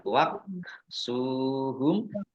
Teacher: Kaf ya waqsuhum sinumah wau sukun Mad thi'i panjang dua harakat mim sukun bertemu dengan huruf wau bacaan izhar syafawi dibaca jelas